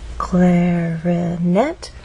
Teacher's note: make our voice Glide up clarinette has three Ables clarinet but it's the final syllable that is stressed and there's a pause right after